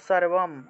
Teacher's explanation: অনুস্বার শব্দের শেষে আছে তাহলে ম রূপে উচ্চারণ হবে